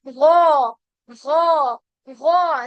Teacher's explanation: गइन पे क्या है, अलिफ मद्दा है, तो इसको हम खींचेंगे और ये मोटा हर्फ है